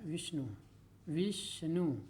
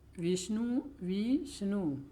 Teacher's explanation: जैसे विष्णु है, विष्णु, विष्णु, वी पर हम ज़्यादा जोड़ देंगे, ठीक है, तभी विष्णु, विष्णु, तो विष्णु शब्द में वी पर बालाघात है।